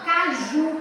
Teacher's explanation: eu tenho como sílaba tônica mais forte o Ju